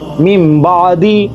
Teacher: نون کی آواز ہم میم میں تبدیل کر دیں گے اور ہم مین نہیں پڑھیں گے بلکہ میم پڑھیں گے، میم بعدی۔ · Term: اقلاب